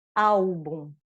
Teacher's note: no final de uma sílaba com um L sozinho, automaticamente ele se converte em U na pronúncia. · o L, ele será pronunciado como U quando for a última letra da palavra ou da sílaba